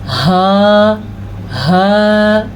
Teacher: تو اس کو دو چشمی ہا کہا جاتا ہے، اور اس کی آواز جو ہے وہ سینے سے نکلتی ہے، حلق کا وہ حصہ جو سینے کی جانب ہے